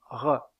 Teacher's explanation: La constrictive vélaire re dans le cas de cette constructive, il y a un resserrement du passage de l'air au niveau du voile du palais. aussi appelle-t-on cette constive une constive vellaire.